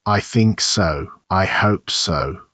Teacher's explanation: First, say the whole answer as one smooth unit, not as three separate words. Second, the stress falls on the verb